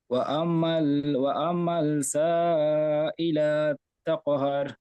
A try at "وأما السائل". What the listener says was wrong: ওয়াম্মাল বলছেন, ওয়াম্মাল হবে না, ওয়াম্মাস। মিমটি সিনের সাথে যুক্ত হবে, লামের সাথে যুক্ত হবে না। ওয়াম্মাস।